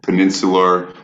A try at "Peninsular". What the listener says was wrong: Peninsular. Why do you keep putting R's? Peninsular.